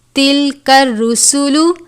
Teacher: سین حروف صفیریہ میں سے ہے، وہ حروف جن کو ادا کرتے وقت سیٹی کی طرح آواز آنی چاہیے.